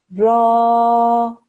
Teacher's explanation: it makes the sound of ra with a fatha, which is normally ra, stretch out for 2 seconds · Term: alif madda